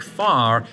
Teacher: Roticity specifically relates to the pronunciation of R. Most Americans today sound out the R in words like far, whereas most English people don't.